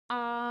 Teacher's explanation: विव्रत स्वर का जब हम उच्चारण करते हैं तो लगभग हमारा मुंह जो है वो पूरा खुलता है। जैसे कि आ, बड़ा आ जब हम बोलते हैं ना, तो देखिए आ, पूरा मुंह खुल रहा है।